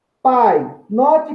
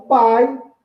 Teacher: quando eu falo pai eu falo numa única emissão de som de voz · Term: ditongo decrescente